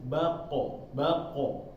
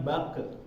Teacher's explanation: Akan tapi karena qaf ini adalah huruf tebal atau isti'la ya. Jadi ketika membacanya ketika dia sukun itu vokalnya lebih ke o, bulat dia.